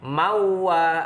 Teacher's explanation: idgham bi gunah tanwin bertemu wawu dibaca masuk dengan dengung 2 harokat